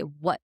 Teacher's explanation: the T that is missing in how native speakers of English talk, it turns into a sound called a glottal stop